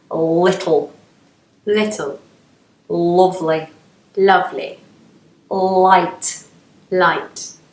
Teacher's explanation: words that begin with an L should be light but northerners make it dark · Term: dark L